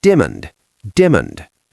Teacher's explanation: He didn't say diamond. He elided the middle syllable. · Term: syllable elision